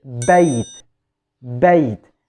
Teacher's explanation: the bay sound or the ya sound, which is in this word, is pronounced from the middle of the tongue